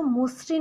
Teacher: শব্দের শুরুতে অ এর পরে যদি ঋকার সংযুক্ত ব্যঞ্জন বর্ণ থাকে, তাহলে হচ্ছে অটা ও হয়ে যাবে।